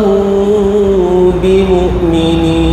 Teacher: mim bertemu dengan ba. Ha yang tu ikhfa syafawi. Ya. Dengung dua harakat.